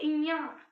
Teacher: मुख के साथ साथ हमारी नाक से भी वायु प्रवाहित होती है। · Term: नासिका वर्ण